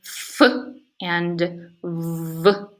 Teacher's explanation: The next two sounds are f and v, and they are produced like bilabials, uh, but with the lower lip contacting not the upper lip, but the upper teeth. So the lower lip, the active articulator, goes up and touches the passive articulator, the upper teeth, thereby creating labiodental sounds